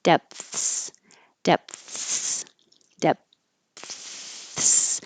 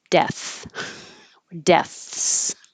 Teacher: So even if you don't close your lips, if you put your tongue in the TH position, depth, it's a little bit between my teeth, but I'm blocking the airflow. And then I relax my tongue and let air go over my tongue for the TH.